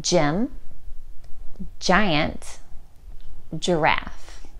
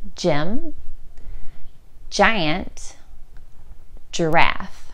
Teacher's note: to make this sound you flatten your tongue and release a big burst of air across your teeth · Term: soft g sound